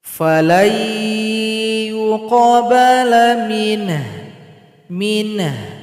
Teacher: sukunkan juga huruf ha, berikan bunyi vokal seperti bunyi mengeluh.